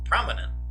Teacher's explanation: the stress goes on the first vowel